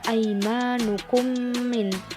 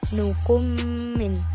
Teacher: mim sukunnya dimasukkan ke dalam mim juga disertai dengan bacaan yang dengung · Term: idgham mimi